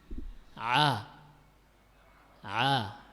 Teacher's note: ketika mengucapkan Ha epiglotis ini mundur ke dinding tenggorokan belakang sehingga menghasilkan suara seperti cempreng